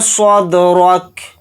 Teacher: صاد کو دال ساکن کے اندر ملا دیں گے اور صاد کو یہاں پر موٹا پڑھیں گے ، دال کے اوپر جزم ہے، دال کے اندر قلقلہ کریں · ملا دیں گے اور صاد کو یہاں پر موٹا پڑھیں گے، دال کے اوپر جزم ہے، دال کے اندر قلقلہ کریں گے کیونکہ دال حروف قلقلہ میں سے ایک حرف ہے، را کو